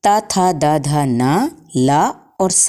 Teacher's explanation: ता था द ध न ला और सा का उच्चारण स्थान दांत होते हैं।